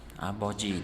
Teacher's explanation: Endi bu yerda mana bu p harfimiz, ko'rayotganinglardek, a va o harflarining o'rtasida kelgani uchun b deb talaffuz qilinadi. Talaffuzi a, bo, ji.